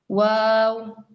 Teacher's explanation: വാവ് circle ആണ്, ചുണ്ട് circle ഷേപ്പാണ് ഉണ്ടാവുക.